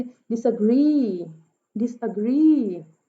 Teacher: अब री पे जो है वो स्ट्रेस है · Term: एनापेस्टिक